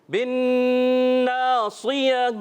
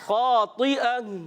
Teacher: آخر میں اگر گول تا آ رہی ہو پیارے بچوں اور مدنی چینل کے ناظرین, تو اس کو وقف میں ہم کیا کرتے ہیں, ہا سے بدلتے ہیں